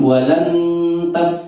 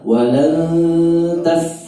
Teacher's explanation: Nunnya langsung menuju ke lidahnya tak, tapi tidak boleh ditekan dengan jelas. Tidak boleh walan taf, tapi samar walan taf.